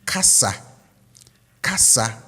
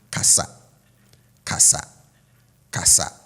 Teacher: the tone on the ka goes up, right? And then it drops slightly on the sa